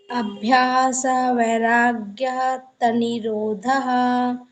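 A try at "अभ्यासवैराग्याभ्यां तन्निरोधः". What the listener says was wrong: अभ्यास वैराग्य नहीं, अभ्यास वैराग्याभ्याम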